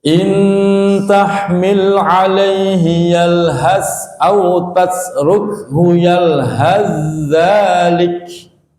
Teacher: Yalhazza, sa diidghamkan, dimasukkan ke dalam za, idgham mutaqaribain.